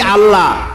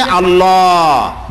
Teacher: আল্লাহর নামটা হচ্ছে আল্লাহ, বলতে গিয়ে মুখটা গোল হয়ে যাবে।